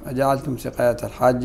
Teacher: المد لازم. شنو هو حده؟ حده ست حركات، ست حركات عند جميع القراء